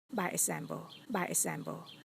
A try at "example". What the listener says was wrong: Not example, but example. You need to feel that in your throat. Also, the P in example is not supposed to be a clear P. What you've done is you made it a B, which is correct, but you omitted the held P.